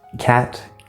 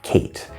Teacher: name of the letter A, which is a diphthong, two vowel sounds put together